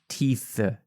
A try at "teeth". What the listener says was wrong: It sounds like an F when you do it.